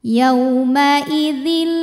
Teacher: Bil gunah karena ada tanwin kasrah menghadapi huruf lam cara bacanya tanwin dimasukkan ke lam · tanwin dimasukkan ke lam yauma idzil, tanpa didengungkan, tanpa ditahan ya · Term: idgham bila gunnah